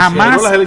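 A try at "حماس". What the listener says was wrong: la H se pronuncia J, ganó elecciones locales.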